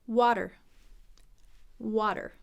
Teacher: wha and then that flap T sounds like a deep dip the tongue hits the roof of the mouth quickly